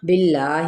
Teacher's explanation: اس میں جلالہ کا لام باریک پڑا جائے گا